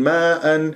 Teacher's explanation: تجده تجده لا تجيد وساكن قبل هدان الطبيعه حركتين ماء هنا اجتمع حرف المد والهمزه في كلمه ماء واجب متصل اربعه وخمس حركات